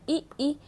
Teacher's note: ई बोल के देखिए खुद, आपको तालु के स्पर्श होंगे।